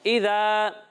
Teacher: ذال میں سیٹی کی آواز نہیں آئے گی